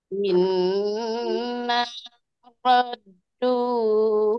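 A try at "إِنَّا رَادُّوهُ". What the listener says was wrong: Ro-nya panjangin.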